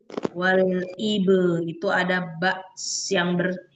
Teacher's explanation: ba sukun dipantulkan karena di tengah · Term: Qalqalah sugra